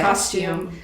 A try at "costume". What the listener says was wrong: Costume. You guys really like emphasize the U. Costume. You say cost. You guys sound like costume or costume. Yeah, but costume. Yeah, costume. That's how you're supposed to say it.